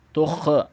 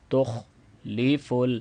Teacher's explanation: خا پہ کلکلا نہیں ہوتا ہے، خا کو موٹا پڑھنا ہے